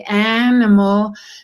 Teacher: there's no clear division between the vowel and the following consonant